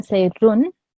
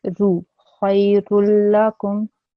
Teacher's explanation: no nasal sound should be produced